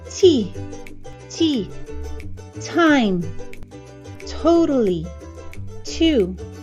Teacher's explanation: There's a lot of air that comes out when you pronounce T, especially in front of a microphone.